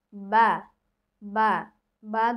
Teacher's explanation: দুই ঠোঁটে ভিজা জায়গা হতে, অর্থাৎ যে ঠোঁটের যে এই জায়গাটা, এই জায়গা উপরের এই জায়গার সাথে লাগবে।